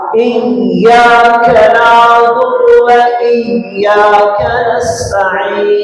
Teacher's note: Jadi ya tasdid itu harus ditekan. Kalau nggak ditekan nanti nggak sah al-fatihahnya.